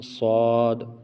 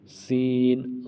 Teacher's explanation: تو صاد کو موٹا اور سین کو باریک، سین صاد، ٹھیک ہے۔